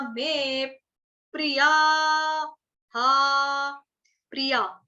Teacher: और विसर्ग जो एंड में देख रहे हैं 2 डॉट्स, उसका उच्चारण होगा आपका हा से होगा